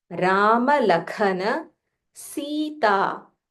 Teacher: So you'll have to say Kha with aspiration.